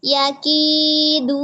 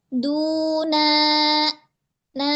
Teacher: dia terhempas enggak ada penekanan di tenggorokan